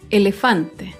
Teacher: Elefante se acentúa en la penúltima sílaba, pero no lleva tilde porque termina en vocal. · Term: palabra grave